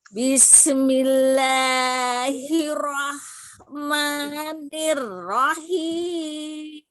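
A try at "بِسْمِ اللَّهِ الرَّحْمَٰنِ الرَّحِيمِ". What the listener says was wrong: Hati-hati, sinnya ngalir ya, tidak dipantulkan, bukan bismi. Bismillahirrahmanirrahim. Tadi huruf H-nya terbaca kho. Rahmanirrahim.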